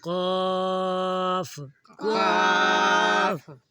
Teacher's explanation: قاف قلقلہ کرنا ہے اور کھینچنا بھی ہے، مد ہے